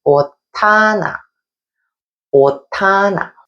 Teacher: The shiot batchim in 옷 is changed to a di귿 sound by the final consonant rule. So the di귿 sound is tensed and we say 옷하나, 옷하나.